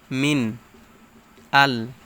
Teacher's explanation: নুন সাকিনের পর আলিফ আসছে বা হামজা আসছে তাই এখানে স্পষ্ট করে পড়তে হবে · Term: ইজহার